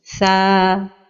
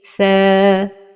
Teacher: Les erreurs de prononciation de la lettre tha avec la prolongation de la voyelle fatha est d'emphatiser la prolongation comme ceci, tha, ou bien de l'amincir comme ceci, thé, et la prononciation correcte est tha.